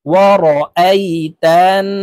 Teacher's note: তো আমরা এই যে হরকতের বামে এখানে নুনের উপরে তাসদীদ আছে, তাই এই তা নুনের সাথে গুন্নার সহিত পড়ব, নাকের বাসি থেকে আমরা গুন্নাহ করে পড়ব